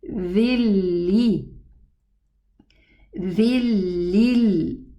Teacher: I pronounce the first kasra, which is the normal movement of the letter dhal, but the second kasra, which represents the Noon Sukun, it's totally merged into the lam. So this is how it's going to be pronounced. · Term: total merging